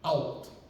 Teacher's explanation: So it's got this big thick L where the back of your tongue is hitting the top of your palate. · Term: thick Gaelic L